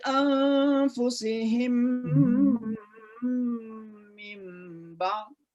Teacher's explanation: Jadi idgham mimi. Idgham itu artinya suara mim dimasukkan ke mim selanjutnya gitu